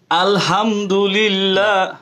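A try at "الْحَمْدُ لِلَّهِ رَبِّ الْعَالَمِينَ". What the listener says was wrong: হলো না, আলহামদুলিল্লাহ হলে হা হয়ে গেল, আলহাম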